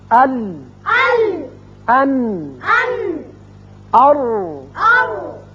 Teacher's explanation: زبان کا اگلا سرا اور لام میں پہلے چاروں جو دانت ہیں ان کے ساتھ لگنے سے یہ لام ادا ہوتا ہے، اور تین سامنے والے دانتوں سے لگنے سے نون، اور دو کے ساتھ را، لیکن اوپر والے ال، ال، ان، ان، اور۔ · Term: زبان کی نوک اور کروٹ کے حروف